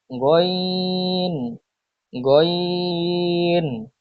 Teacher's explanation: কণ্ঠনালীর শেষ হইতে উচ্চারিত হয় গইন